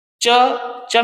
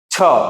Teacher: जिनके उच्चारण में अधिक वायु निकले श्वास नली से और साथ में हुकार या हकार की ध्वनि निकले वो है महाप्राण